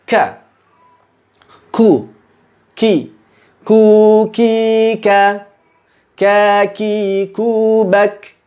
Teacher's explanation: huruf kaf ini keluar suaranya sambil beriringan dengan hembusan udara